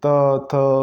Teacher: आपकी जीभ कहाँ टकराएगी? दांत पर जाकर, तो दंत।